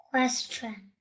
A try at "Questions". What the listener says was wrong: There is an S here. Okay. Questions. Again.